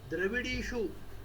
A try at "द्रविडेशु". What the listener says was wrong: द्रविडीशु नहीं है यहाँ पे, द्रविडेशु है, द्रविडीशु नहीं है।